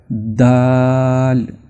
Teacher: یہ جو دال کی آواز ہے یہ زبان کا جو اگلا کنارہ ہے، اس کو جب اوپر والے جو دانت ہوتے ہیں سامنے والے ان کے درمیانی حصے سے جب آپ ٹچ کریں گے تو دال پیدا ہوگا